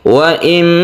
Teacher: nun mati ini masuk ke mem, melebur menjadi tasydid mim, sehingga dia itu tidak terbaca nunnya, langsung ke mim